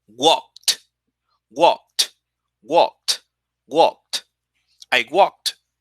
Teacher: So when you make it in past, it's unvoiced, you make it with a t. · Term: t sound